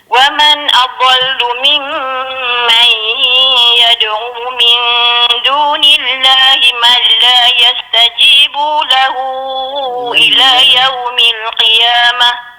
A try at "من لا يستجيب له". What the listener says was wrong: Ada yastajibu, puan terpanjang situ. Yastajibu lahu.